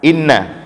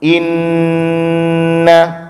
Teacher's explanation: nun yang bertasydid, mim yang bertasydid juga dibaca dengung lama. Maka bacaannya lama di sini.